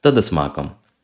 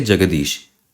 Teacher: So ta changes into da